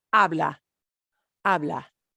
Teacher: it's just that naked ah vowel hanging out at the end we take off the ar we just use the ah ending